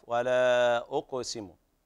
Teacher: بين القلقلة في القاف